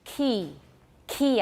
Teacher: i have a lot of aspiration